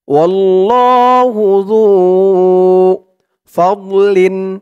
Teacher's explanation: ওয়াল্লাহু, ওয়াও দিয়ে লাম ধরবে, ওয়াও লাম জবর ওয়াল, লাম খারা জবর ল, ল এক আলিফ টান, ওয়াল্লাহু যু, যু এক আলিফ টান, পেশের পরে ওয়াও সাকিন, যু। আর এখানে জালের উচ্চারণটা একদম নরম পাতলা হবে, জিহ্বার মাথা উপরের দাঁতের মাথার সাথে লাগবে জালের উচ্চারণটা করার সময়।